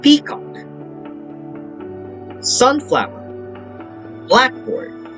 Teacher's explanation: have primary stress on the first component and the secondary stress on the second